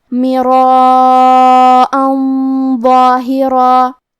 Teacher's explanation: کیونکہ غنہ اپنے اگلے والے حرف کا حکم لیتا ہے تفخیم میں اور ترقیق میں، اور حرف الضو حروف التفخیم میں سے ہے تو ہمیں یہ غنہ کو بھاری آواز میں ادا کرنا ہے